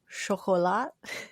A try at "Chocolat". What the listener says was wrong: Chocolat. No silent T. You had it very well, except for just the T.